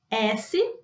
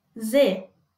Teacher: Vocês conseguem sentir que a movimentação da nossa boca não vai mudar. A diferença é exclusivamente esse movimento da garganta.